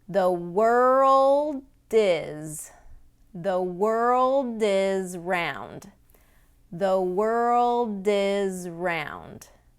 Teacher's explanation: Now again, in this situation, that D is the ending sound, And usually native speakers won't say a very strong D sound, but again, when it's followed by a vowel, we want to link it.